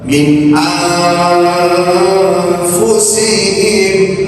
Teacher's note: maka bunyikan saja huruf nun, tapi makhrajnya fa.